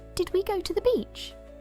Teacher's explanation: First, we look at Ella's mum, who uses classic features of child-directed speech like rising intonation